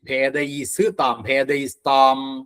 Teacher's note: ഭേദൈ താം, ഭേ ഘോഷാണ്, ഘോഷാക്ഷരാണ്. ഭേദൈ താം, അവിടെ ഭേദൈസ്താം എന്നാവും. വിസർഗം സകാരായിട്ട് താം